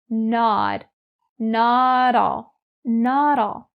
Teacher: The pronunciation you need to be careful of is the connecting between not and all. So that T in not is standing between two vowels. So we have the flap D sound